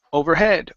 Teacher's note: the stress is at the end of the word